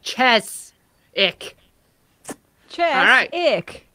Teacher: Chiswick. Emphasis on the first syllable.